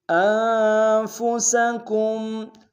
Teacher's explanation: نون ساکن یہاں پہ غنہ کریں گے، سین کی سیٹی باریک ہوگی